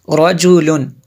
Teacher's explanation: را کو پر پڑھیں گے کیونکہ اس پر زبر ہے